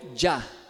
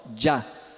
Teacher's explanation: Nós chamamos essa junção aqui de um africado. Africado homorgânico alveopalatal sonoro